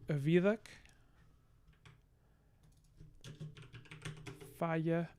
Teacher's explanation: We have allophonic voicing of fricatives in intervocalic position.